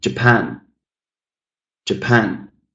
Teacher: Quite clearly, the stressed syllable is the second one. So I'm putting a lot more effort when I'm saying pan.